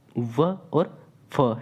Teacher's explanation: ऊपर के दांतों और नीचे के ओठों से मिलने से होता है, ठीक है, उसे क्या कहा जाता है, दंतोष्ठ व्यंजन कहा जाता है।